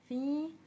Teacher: فی میں تھوڑا کھینچ رہے ہیں کیونکہ حرف علت ہے۔ مختلفون، فون میں ہم کھینچ رہے ہیں کیونکہ فو میں واو ساکن سے پہلے پیش ہے اور یہ حرف علت ہے، اس کو دوسرا نام حرف مدہ ہے، اس لیے ہم اس کو کھینچ کر پڑھ رہے ہیں اور آخر میں ہم وقف کر رہے ہیں۔